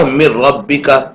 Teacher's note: اس طرح دوسرا حرف ادغام ہے را، اس کی مثال ہے من ربک، دیکھو نون ساکن کے بعد حروف ادغام میں سے را آئی ہے تو نون کا ادغام را میں ہوگا، اور میم کو را سے ملا کر پڑھیں گے، نون کو نہیں پڑھیں گے کیونکہ نون تو را میں مل گیا ہے، اور ادغام کی نشانی اوپر تشدید لگائیں گے تو پڑھا جائے گا من ربک۔